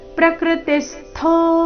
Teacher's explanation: ತಿ ಮೇಲೆ ಆಘಾತ ಥೋ ಮಹಾಪ್ರಾಣ ದೀರ್ಘ